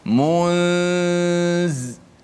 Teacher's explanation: Maknanya menyembunyikan nun itu, nun mati itu di sisi huruf zai. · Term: ikhfa